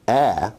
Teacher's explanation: A is a low, front, unrounded vowel.